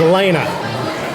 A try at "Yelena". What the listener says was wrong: Closer. Closer. It starts with a Y. Yeah, Yelena.